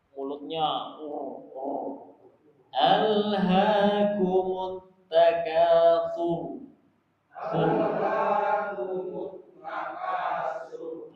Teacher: Nah, rnya tebal ini karena harakat sebelum ro itu domah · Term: ro tebal